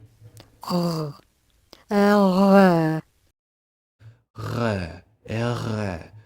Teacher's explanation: This is the uvular sound, the ra sound. So the way you pronounce this is, if you look at this diagram, you can kind of see how her tongue goes back.